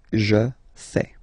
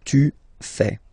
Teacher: Remember, final S not pronounced.